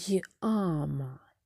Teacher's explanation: Але у слові яма буква я перетворюється на звуки й а йама Яма і позначається так звук й м'який приголосний а голосний